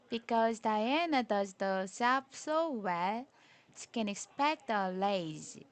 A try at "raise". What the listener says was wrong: Oh, not lays. Make it an R sound.